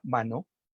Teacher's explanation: el fonema N es un fonema alveolar nasal sonoro, por ejemplo, en la palabra mano, alveolar nasal sonoro, punto, modo y sonoridad.